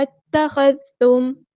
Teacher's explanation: میم ساکن کی جو آواز ہے یہاں پہ ہمیں ٹائم نہیں لگانا، اظہار شفوی ہو رہا ہے